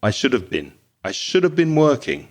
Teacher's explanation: Actually, it's been. When you're speaking normally, that been becomes very, very short and weak.